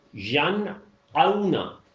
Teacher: آئین کی آواز نہیں ملانی ہے، حمزہ ہی کی رہے گی. ین اونا، واو کی آواز جو ہے وہ کلیرٹی میں لانی ہے.